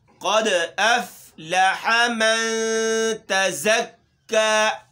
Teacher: دال میں قلقلہ ہے اور قاف موٹا ہے